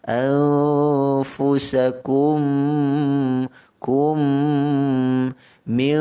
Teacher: Kalau sambung anfusakum, mim mati bertemu dengan mim, hukumnya idgham mithlainis saghir, maka wajib kita dengungkan ataupun memasukkan mim pertama kepada mim yang kedua, dan kita wajib dengungkan mim yang kedua ini dengan kadar 2 harakat